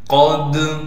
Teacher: قاف کو دال سے ملائیں گے، دال پر قلقلہ ادا کریں گے